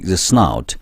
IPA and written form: snaʊt (snout)